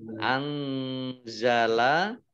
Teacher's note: Anzala nun sukun bertemu dengan huruf za, bacaan ikhfa dibaca samar-samar.